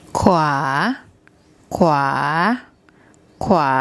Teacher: Then the War Wan. Those two make a consonant cluster, a KW consonant cluster, followed by the long R vowel.